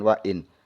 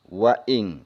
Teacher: Nunnya tidak jelas, langsung kita masukkan ke kaf. · Ini nun mati bertemu dengan kaf, maka hukumnya tajwidnya ikhfa.